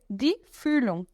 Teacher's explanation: Vou fazer boca de falar aí, für. E o NG no final, eu faço sem falar o G.